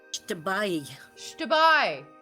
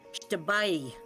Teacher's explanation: There's a little E sound at the end. It's a diphthong.